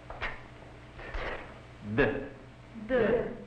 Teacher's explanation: Instead of being articulated against the gum ridge, the tip of the tongue will be braced against the upper incisors.